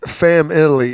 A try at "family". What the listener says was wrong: It's You put a third syllable in there. Family. Family.